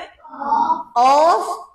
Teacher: জিহ্বার গোড়া তার বরাবর উপরে তালুর সাথে লাগিয়ে সেখান থেকে অফ উচ্চারিত হবে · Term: আকাসাই লিসান